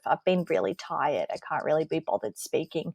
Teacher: it's that creaky tone. A lot of people use it when they're on Zoom. It's really low effort. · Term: vocal fry